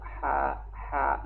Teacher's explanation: Nah, ya kan? Namun dia makhrajul hurufnya adalah huruf khalqi, tenggorokan bagian tengah, dan rakhawah artinya berlalu